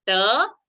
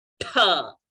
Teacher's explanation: Ta, when you aspirate with more air, it will become tha. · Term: mahaprana